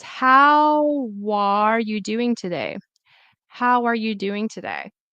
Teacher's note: the W, the consonant sound will go into where the vowel starts